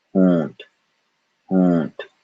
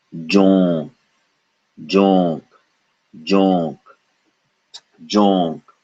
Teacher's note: There is a vibration in the nose when we say O for the duration of O. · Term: nasal vowel